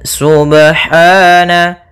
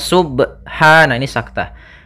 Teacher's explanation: mimmaa laa ya'lamun pada bacaan Subhana ada pada lafal ba sukun Apabila ada huruf ba dia harakatnya sukun maka ada hukum Qalqalah maka harus dipantulkan dalam membacanya